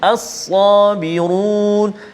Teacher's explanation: Pertama huruf sad tebal, sad ada alif mat pula dengan dia. As-sa tebal.